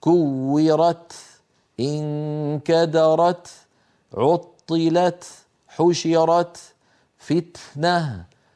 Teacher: الكاف والتاء شديده ومهموسه والشده انحباس الصوت والهمس جريان النفس · فإذا بعد شدة التاء همس